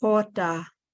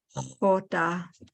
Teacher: There's that H that's from your esophagus. It's the aspirated H